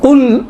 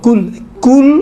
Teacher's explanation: قل اور قل، قل دیکھیں قل اور قل زبان کی جڑ ہے، زبان کی جڑ کو آپ نرم والی جگہ سے آپ اوپر تالو کے طرف لگائیں تو قل نکلتا ہے، اگر اسی کو جو سخت والی جگہ ہے اسی کے ساتھ والی جگہ جو سخت ہے ادھر اگر یہ زبان کی جڑ لگے تو کل، کل اور قل، یہ اس میں انشاءاللہ تعالی مراعات فرمائے۔